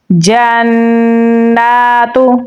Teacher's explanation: جیم کو نون کے ساتھ ملائیں گے. نون کے اوپر تشدید ہے تو غنہ کریں گے. کھڑی زبر بھی ہے تو اسے ہم لمبا بھی پڑھیں گے.